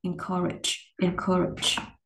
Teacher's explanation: Sở dĩ nó có cái âm r là do cái âm ơ này nè, mình cong lưỡi, mình gồng cái lưỡi lên đó, thì nó nối với âm y này, nó sẽ nghe giống như là âm r.